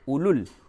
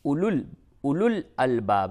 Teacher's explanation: یہ جو واو ہے اسے نہیں پڑھیں گے، اولل نہیں بولیں گے بلکہ اولو الالباب